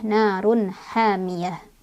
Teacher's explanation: Ha mad tabi'i karena ada alif sebelumnya ada fathah di huruf ha ya, bacanya panjang 2 harokat. Hamiyah, tak marbutoh ketika berhenti jadi ha sukun, ha besar ya